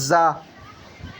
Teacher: जा को जब हम प्रोनाउन करते हैं तो इसमें सीटी आती है